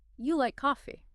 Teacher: intending it as a simple yes-no question, just using rising intonation